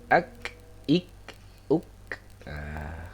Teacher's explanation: Jadi untuk qaf dengan kaf, kalau qaf itu dia di pangkal lidah bertemunya dengan langit-langit lunak, kemudian yang kaf itu dia bertemunya dengan langit-langit keras